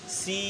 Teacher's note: آخر میں ہلکی سی ناک میں لے کے جانا ہے اس کو ہلکا سا